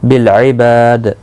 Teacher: با الف مدہ ہے، دال ساکن پر قلقلہ ہوگا وقف کی صورت میں